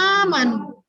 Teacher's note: Mad badal itu cara membacanya adalah dengan dibaca sepanjang dua harokat. Ya, seperti mad asli atau mad tabi'i ya.